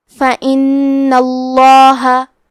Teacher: حرف نون پہ تشدید ہے تو ہمیں یہ حرف کو 2 حرف کے برابر پڑھنا ہے. کیونکہ اس پہ تشدید زبر کا ہے تو ہم لفظ الجلالہ مطلب کلمت اللہ کے لام کو موٹی آواز میں پڑھیں گے.